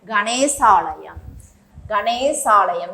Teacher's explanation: இதனுடைய நெட்டெழுத்து, ஏனெனில் நிலைமொழியின் இறுதி எழுத்து அகரமாக அமைந்து வருமொழியிலும் நமக்கு ஆ என்ற சொல் வந்ததால் நெட்டெழுத்து நீண்டு ஒலிக்கிறது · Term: தீர்க்க சந்தி